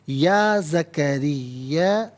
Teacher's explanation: را کے نیچے زیر، را کو باریک کر کے پڑھا جائے گا